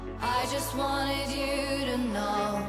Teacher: ed is pronounced as a separate syllable with an id sound